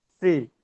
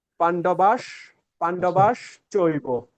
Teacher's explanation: আমরা যখন তালব্যস উচ্চারণ করব উপরের প্লেট এই তালু থেকে উচ্চারণ করব যেমন স্রি যেমন এখানে আছে পান্ডবাস পান্ডবাস চৈব তাহলে আমার তালব্য